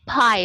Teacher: the sound or the air in your mouth is stopped by the closure of your lips and so it's voiceless means to say uh only the there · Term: bilabial